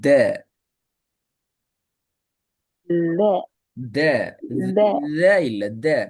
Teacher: நாக்கு மேல் பற்களோட பின் பகுதி உள்ளுக்குள்ள போயிட்டு படணும் அப்பதான் த சவுண்ட் வரும் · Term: தால்